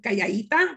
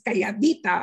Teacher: Deletion of intervocalic D in songs versus speech